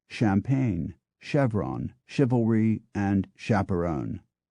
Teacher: the newer words retain the softer sh sound of champagne Chevron chivalry and chaperon